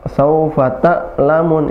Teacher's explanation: Ain suaranya pertengahan, ya, bukan menekan banget, misalnya, atau tertahan.